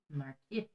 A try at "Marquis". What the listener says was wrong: I think the S is silent.